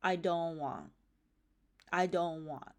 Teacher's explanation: they don't pronounce the t so the t drops out of all negative forms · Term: final cluster simplification